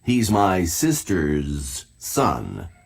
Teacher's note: the words sisters boys and moms all make a z sound